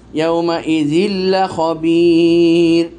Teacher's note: তানমিনের পর লাম এসেছে, ইদগাম হয়েছে, ইদগাম নাকিস, পরিপূর্ণ ইদগাম না, ইদগাম হয়েছে, তানমিন লামে ঢুকে গেছে কিন্তু গুন্না ছাড়া।